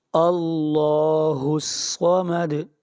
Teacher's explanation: دال کے اوپر قلقلہ ہوگا، یعنی آواز کو ہلائیں گے